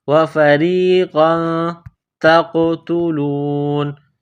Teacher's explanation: تا کو قاف کے ساتھ ملانا ہے، قاف کو موٹا کرنا ہے، تا کو باریک کرنا ہے. تا قاف زبر تق.